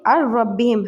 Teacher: اگر نون ساکن اور تنوین کے بعد لام یا رو میں سے، ان 2 ورڈ میں سے، لیٹر میں سے کوئی سا بھی لیٹر آ جائے تو وہاں پر ہم اس کو جوائن کریں گے آپس میں، لیکن نوزل ساؤنڈ نہیں نکالیں گے، مینس ناک سے آواز نہیں نکلے گی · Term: ادغام وداؤٹ غنہ